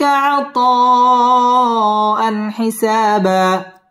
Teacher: ইজহার গুন্না ছাড়া স্পষ্ট করে পড়তে হবে